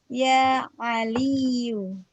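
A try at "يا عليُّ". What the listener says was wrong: Ahsanti, ya Aliyu.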